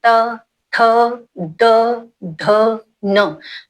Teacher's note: आपकी जीभ आपके दंत दांतों तक टच होती है त देखिए आपकी जो जीव है वो दांतों को टच कर रही है स्पर्श कर रही है